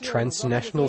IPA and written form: trænsˋnæʃənəl (transnational)